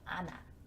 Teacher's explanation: 우리는 안하라고 하지 않고 히읗이 탈락된 채 니은이 바로 연음이 되죠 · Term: 히읗 탈락